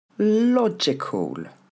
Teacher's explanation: L'accent tombe sur la première.